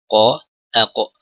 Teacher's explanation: Huruf qaf ini lebih ke dalam